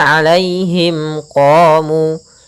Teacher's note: Kemudian pada mim mati bertemu qaf, maka ini kita namakan dengan bacaan izhar syafawi, yaitu suara mimnya harus jelas